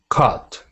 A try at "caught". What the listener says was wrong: It's just caught. Exactly.